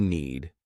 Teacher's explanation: Notice that I didn't pronounce the D